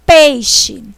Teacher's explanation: Eu falei o E com mais força, então ele é vogal. Eu falei o I com menos força, semivogal. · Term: ditongo